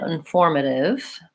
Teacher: I am using a flap T there